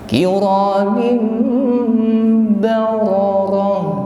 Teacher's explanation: Bararah ditutup dengan tak marbuthah, maka kita ucapkan tak marbuthah yang di akhir ayat menjadi huruf ha